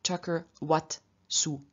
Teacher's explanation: And so in front of this voiceless consonant, the weak suffix appears as wat, ending in a t, which is voiceless, just like the s that follows